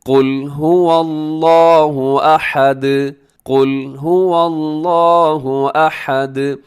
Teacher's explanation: آخر میں دال کو آپ نے ہلانا ہے، اس کی آواز کو ڈبل کرنا ہے کیونکہ وہ حروف قلقلہ میں شامل ہے